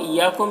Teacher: इय्याकुम या मद्दा है, अलिफ मद्दा है, एक अलिफ के बराबर खींचेंगे। कुम के मीम में इज़हार शफ़वी हो रहा है, इसे जल्द पढ़ना है।